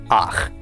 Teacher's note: then you will pronounce the patach before the chet. So instead of pronouncing this cha, you will pronounce it as ach.